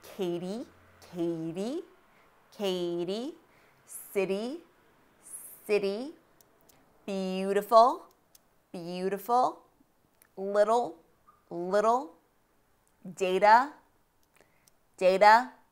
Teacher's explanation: T is a flap T when it is between two vowel sounds or diphthongs.